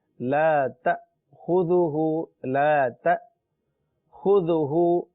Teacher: اللہ لا الہ الا هو الحی القیوم لا تأخذه، تا پر زبر ہے اور آگے جو حمزہ ہے اس کے اوپر سکون ہے، جزم ہے. لہٰذا یہاں ہلکا سا جھٹکا دیں گے